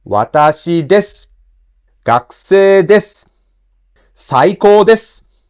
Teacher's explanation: If you attach desu to a flat word, the accent comes on de.